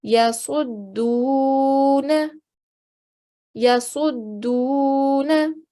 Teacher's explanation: I elongated, I stretched out the sound of the dal because there is a vowel sakin. The dal that's joining to the vowel sakin is carrying a dhamma. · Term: vowel mad